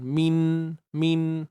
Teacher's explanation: Min hujung lidah dengan gusi hadapan tu ada sentuhan